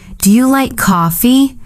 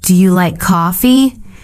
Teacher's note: Your voice rises at the end.